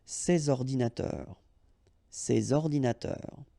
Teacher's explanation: All right, and of course les adjectifs démonstratifs, sorry, this or these, okay, and in that case I took the plural form, so these here, and then ordinateur, computers, so you should make the liaison between s and o